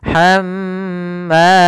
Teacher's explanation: ketika mim dan nun bertasydid itu kita tahan dulu. Kalau dia mim berarti tahan nya, kalau nun berarti tahan nya, maka hamma tidak langsung dilepas hammalatal hatab, tapi tahan dulu hamma. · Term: gunnah